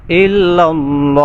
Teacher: যেহেতু আল্লাহ শব্দে লামের পূর্বে জবর আসছে এজন্য এই লামটাকে ফুর করতে হবে